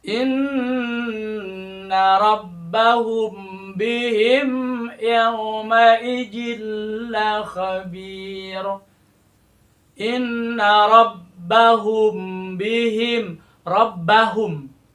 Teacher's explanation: Di sini ada bunyi samar-samar, kemudian juga dengung, ya. Karena huruf mim dan huruf ba disatukan, dilebur, diidghamkan. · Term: ikhfa syafawi